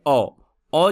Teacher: औ बोलने के लिए जीभ के मिडिल पार्ट का इस्तेमाल करते हैं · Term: मध्य स्वर